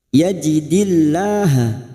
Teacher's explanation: lam jalala kita baca tarkik atau tipis karena sebelumnya ada harakat Asro yajidillah gur Alif kecil di atas